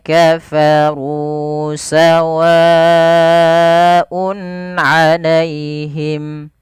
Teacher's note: panjang berapa Empat harakat karena dia mad mad wajib muttasil